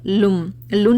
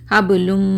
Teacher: लाम की जो पेश है ना उसको मीम से मर्ज करूँ, लुन नहीं पढ़ना